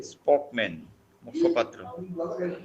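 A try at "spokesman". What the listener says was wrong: স্পোক্সম্যান একটা এস আছে, স্পোক্সম্যান মুখপাত্র। না স্পোক্সম্যান একটা এস আছে, এই যে আবার স্পোক্স। স্পোক্সম্যান মুখপাত্র।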